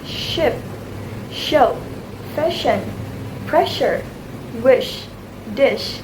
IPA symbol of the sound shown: ʃ